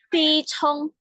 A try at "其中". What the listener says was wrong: 其中， 中-nya tidak pakai angin, jadi dia bersih. Cuma lidahnya diangkat ya. Ci Trung. Ci Trung itu pronunciation yang benar.